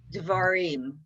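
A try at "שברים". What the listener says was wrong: No, it's Shvarim with a shin. So that's very good, but Shvarim with a shin.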